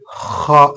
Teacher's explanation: ജീമിന് ഉള്ളിലാണ് പുള്ളിയെങ്കിൽ ഇവിടെ ഹിന് മുകളിലാണ് പുള്ളി പറയുന്നത് ഹാ എന്നാണ് അഥവാ തൊണ്ടയുടെ മുകൾ ഭാഗത്തുനിന്ന് ഒരു മുഴക്കത്തോടുള്ള ഹ എന്നാണ് ഹ ഉച്ചരിക്കേണ്ടത്